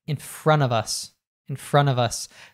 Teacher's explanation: We drop the T sound the N connects to the OF which becomes a schwa sound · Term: connected speech